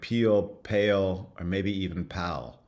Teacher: there's a diphthongal pronunciation so a change in the vowel up to the the consonant · you'd have something like peel pale or maybe even pal um the vowels are are retracting are going backwards so these are front vowels and they're becoming more back before the LA